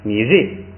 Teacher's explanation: ri不准读ri，不准读3声，也得变成4声